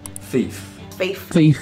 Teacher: you're a speaker of an accent that fronts th sounds meaning instead of using your tongue tip and the teeth you use something more to the front of the vocal tract like your lip going to your teeth